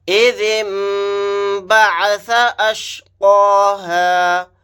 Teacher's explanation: نون ساکن کے بعد با آ گیا تو یہاں پر دیکھیے نون کو میم سے بدل کر غنہ کے ساتھ پڑھیں گے، یعنی میم کو ذال کے ساتھ ملا دیں گے اور غنہ کریں گے.